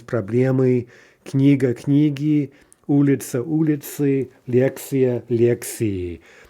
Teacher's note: in feminine nouns like that, we can be pretty much certain the stress is going to remain on the stem everywhere, including in the plural